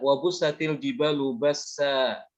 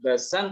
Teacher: Yes, kalau disambung dengan ayat berikutnya. Tapi ketika berhenti di wakaf, tanwinnya hilang. Diganti dengan alif. Nah inilah yang namanya mad iwad.